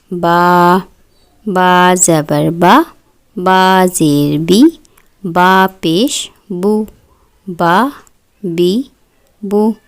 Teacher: زبان کی جڑ تالو کی جانب بلند نہیں ہوتی، جس کی وجہ سے یہ حروف باریک پڑھے جائیں گے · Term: حروف مستفعلہ